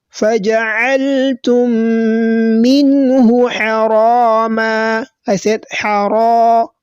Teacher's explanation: The ra has been elongated, and this type of elongation is known as al-madd al-asli, that is basic elongation.